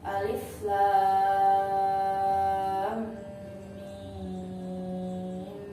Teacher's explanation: Di situ ada mad bertemu dengan tasydid dalam satu huruf, maka cara bacanya panjangnya 3 alif atau 6 harakat. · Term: mad lazim harfi musaqqal